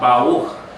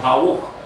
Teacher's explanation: It sounds like a W sound. Her R is so soft. It doesn't ripple like in the Spanish or Latin-based languages. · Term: letter Resh